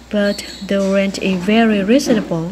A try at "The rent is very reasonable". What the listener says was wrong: Rent is very reasonable. Thiếu âm S ở trong từ is.